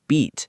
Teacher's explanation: Now try a voiced sound like b in beat. You should feel your vocal cords vibrating